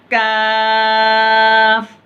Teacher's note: कौफ जो था, जो कौफ पढ़ा जाता था ज़बान की जड़ से पढ़ा जाता था, और ज़बान की जड़ से थोड़ा सामने की तरफ से काफ पढ़ा जाता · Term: काफ का जो मखरज